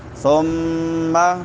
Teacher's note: میم مشدد ہے شد والی تو یہاں پہ غنہ ہوگا